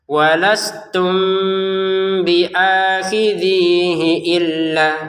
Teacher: kata walastum di sini mim sukun bertemu dengan ba, maka dibaca dengan samar.